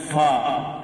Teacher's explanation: ফা উপরের দাঁতের আগা আর নিচের ঠোটের উপর বসে উচ্চারিত হয়